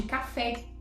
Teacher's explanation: café apresenta a última sílaba tônica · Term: oxítonas